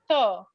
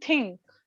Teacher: Th is your tongue touching the back of your teeth. Okay. Dental.